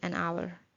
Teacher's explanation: Hour stands with H, but H is silent here, so the word begins with the vowel sound